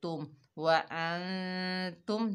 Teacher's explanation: व ता के ऊपर पेश, आगे मीम साकिन है, ता को मीम से मिलाएंगे तुम, व तुम, मीम का इजहार होगा, इजहार शफवी का कायदा है